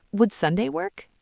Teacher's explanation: Your pitch goes up on the word work. · your voice should rise slightly at the end. Would Sunday work?